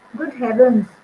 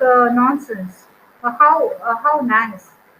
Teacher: the falling tone in strong exclamations and statements expressing the pleasure